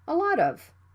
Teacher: the T sound between vowels it can be flapped